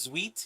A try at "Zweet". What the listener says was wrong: Correct, but pronounced with a Z. Zweet now. Zweet.